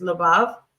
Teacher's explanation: we see it's 2 syllables, and it is accented on the last syllable, and the pretonic has a changeable vowel.